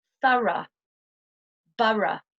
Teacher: the next pronunciation is the pronunciation of ough as a schwa, the sound in British English.